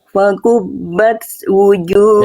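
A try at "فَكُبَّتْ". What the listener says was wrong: Nah, jangan ada S. Jangan ada bunyi S.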